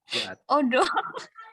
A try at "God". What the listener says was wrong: Huruf O ya di kata GOD. GOD dibaca God. O itu dibaca A di situ. Padahal hurufnya jelas ya O gitu.